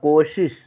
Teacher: इस 'सा' के उच्चारण को देखिए; इस तालव्य 'शा' का अर्थ है कि जीभ तालू को छूती है।